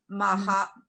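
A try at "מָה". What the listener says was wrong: now what happens, hey, at the end of a word is silent. That would be ma.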